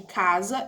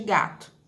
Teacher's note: E tenho aquelas que são velares, que é o K de casa e G de gato